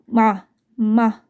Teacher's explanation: 미음을 발음할 때는 입술과 입술이 만났다 떨어지죠. 그래서 입을 본떴고요.